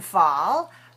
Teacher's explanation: You can see these are labial dental sounds. Labial meaning lip, dental meaning teeth.